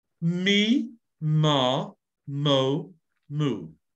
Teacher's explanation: They're consonants we can make a long sound on, voiced consonants.